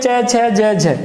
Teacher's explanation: क्या होता है कि स्पर्श तो हो रहा है, लेकिन स्पर्श के साथ में संघर्ष भी हो रहा है। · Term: स्पर्श संघर्षी व्यंजन